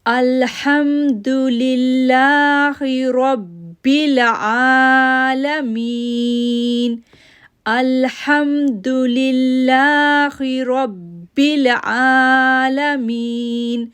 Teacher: مین کو 2 سیکنڈ کے لیے کھینچیں گے کیونکہ یا ساکن سے پہلے زیر ہے، جب بھی یا ساکن سے پہلے زیر آ جائے تو می کو 2 سیکنڈ کے لیے کھینچتے ہیں.